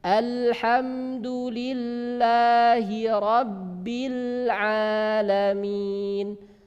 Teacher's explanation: situ kemudian didahului harokat fathah yang ada di huruf Ain dan huruf Ain termasuk huruf tipis sehingga Alif menyesuaikan pada suara Ain tidak boleh menyelisihi berbeda dari suara Ain jadi harus satu ukuran